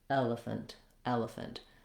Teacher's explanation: My length and my clear vowel is here on the eh sound.